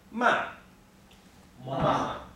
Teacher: starts high and moves low, okay? And it moves down pretty quickly.